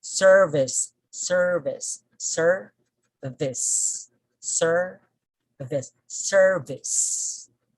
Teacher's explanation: so we put the stress on the first syllable